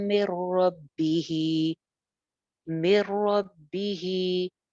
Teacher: नून साकिन के बाद रॉ है, यहाँ पे भी इदगाम है बगैर गुन्ना के